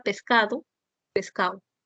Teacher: la elisión de la consonante oclusiva dental Sonora cuando está en última sílaba